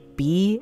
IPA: bɪ́